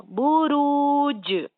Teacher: تو یہاں جیم میں قلقلہ ہوگا